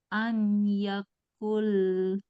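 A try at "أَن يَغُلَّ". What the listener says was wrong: Ayyaghul. Jangan an. Ayyaghul. Yaghul. Yaghul. Yaghul.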